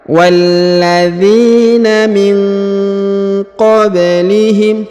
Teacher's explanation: Huruf nun sukun bertemu huruf qaf, maka didengungkan dan disamarkan.